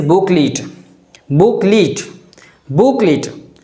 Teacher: There should be stress or emphasis on the sound boo.